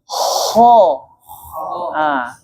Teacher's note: K itu dia pangkal lidahnya saja naik, tapi seluruh lidahnya tidak. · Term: huruf k